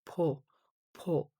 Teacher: So it's like P po P po P po P po P po P po P po P po P po P po Po and P becomes like combining P and H